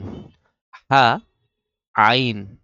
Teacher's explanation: দুইটা অক্ষর গলার ভেতর থেকে উচ্চারণ করতে হয়